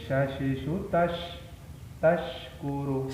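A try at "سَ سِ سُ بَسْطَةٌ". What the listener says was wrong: Sinnya kurang bersih. Sasisu bastotun. Kurang bersih ya, hampir sama dengan tha. Sasisu biasa. Sasisu biasa. Sasisu biasa. Sasisu bastotun. Itu shin. Lidahnya biasa. Sasisu sa biasa. Sa biasa. Sa. Sa biasa. Lidahnya jangan ditekan ke depan.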